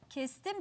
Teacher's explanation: sessizle bitti diye ekini yumuşak ünsüzle başlayan bir ek aldı ve s sesi yumuşak ünsüzü kendine benzeterek D sesini sertleştirip t'ye dönüştürdü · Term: ünsüz benzeşmesi